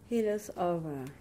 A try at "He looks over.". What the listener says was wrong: You cut your chunk. And you're doing too much stress on your er. He looks over.